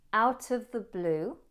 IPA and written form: aʊt əv ðə bluː (Out of the blue)